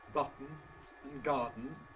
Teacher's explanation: words like ‘button’ and ‘garden’, where you have a nasal release before a syllabic consonant